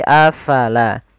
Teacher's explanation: Kemudian pada lafal afala, fa harus alirkan nafasnya. La jangan dibaca apalah, tapi afala.